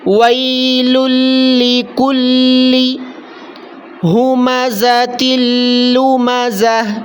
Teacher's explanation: یہاں دو لام ہیں، پہلے لام کو دوسرے لام کے ساتھ ملانا ہے